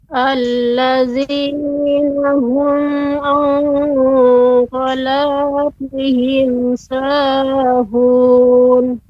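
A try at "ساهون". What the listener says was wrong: Ya, sahun cukup 2. Ya, sahun.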